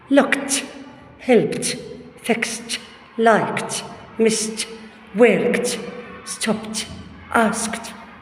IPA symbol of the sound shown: t